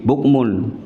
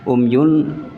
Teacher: Di bukmun, bukmun itu jelas. Umyun dengung, ini ikhfa.